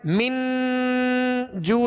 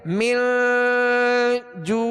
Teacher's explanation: नाक में आवाज को ले जाकर जाहिर नहीं बल्कि छुपाएंगे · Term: इफा